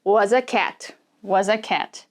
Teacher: so under the table was a cat and this uh this a is going to turn into the schwa sound